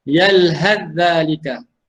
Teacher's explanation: sa dimasukkan ke dalam huruf zal, masuk secara penuh.